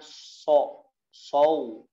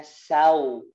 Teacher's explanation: ujung lidahnya Turun ke bawah suaranya menebal dan menutup